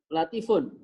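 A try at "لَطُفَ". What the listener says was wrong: Itu bukan latifun. Kalau latifun itu pakai ya, baru latifun. Iya, latofa itu aja.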